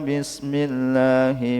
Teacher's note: Bismillahi ada lam jalalah tarqiq yang dibaca tipis, lamnya dibaca tipis.